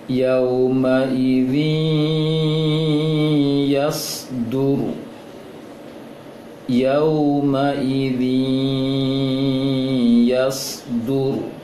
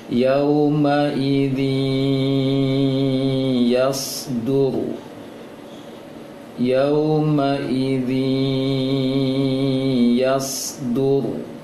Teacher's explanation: panjangkan saja bunyi zi, kemudian keluarkan dari bunyinya dari hidung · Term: dengung